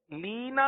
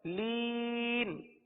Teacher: حروف مدہ کے بعد جو نون پر زبر تھا اس کو ہم نے سکون میں تبدیل کر دیا وقف کی وجہ سے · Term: مد عارض